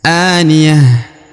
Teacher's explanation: Huruf a dibaca 2 harokat ya, perhatikan. Karena di atasnya terdapat alif kecil ya.